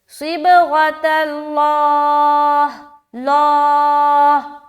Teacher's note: تو دونوں حرف کو پڑھیں گے صبغۃ اللہ، اللہ، اور اینڈ میں اگر آپ یہاں پر اسٹاپ لیتی ہیں تو ہا کی پراپر آواز آنی چاہیے